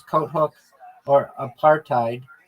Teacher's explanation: And so when we encounter an exception such as coat hook or apartheid, the T is pronounced and the H often dropped in practice